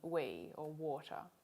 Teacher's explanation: the back of the tongue is raised toward the velum though not enough to block the airflow or to make it noisy at the same time the lips are rounded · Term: labial velar